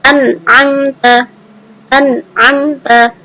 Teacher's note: Nunnya dibaca jelas dan tidak ada dengung. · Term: izhar halqi